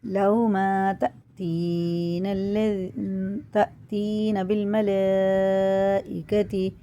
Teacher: مد متصل ہے، 6 الف کے برابر کھینچ کے پڑھا جائے گا۔